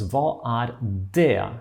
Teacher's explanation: Here, the T of this word det is not pronounced.